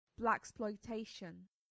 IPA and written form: ˌblæksplɔɪˈteɪʃən (blaxploitation)